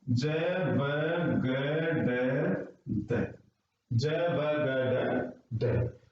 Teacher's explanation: जो ज है तालव्य है, ब ओष्ठ, ग कंठ और ड क्या, मूर्धा। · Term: उच्चारण स्थान